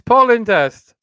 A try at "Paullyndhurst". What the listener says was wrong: No, you're giving it a gap. You're going Paul Lyndhurst. It's Paul Lyndhurst.